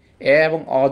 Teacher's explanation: নিম্ন মধ্যবর্ণ মানে হচ্ছে উচ্চ মধ্যের একটু নিচে, এ এবং অ যখন উচ্চারণ করবো জিহ্বাটা আরেকটু নিচে